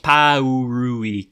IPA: pæ.u.ɹu.ik